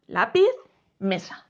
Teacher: veis que su sílaba tónica no es la última es la penúltima la que está justo antes de la última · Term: palabras llanas